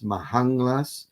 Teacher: we get a metathesis and a full velar nasal instead of the assimilated nasal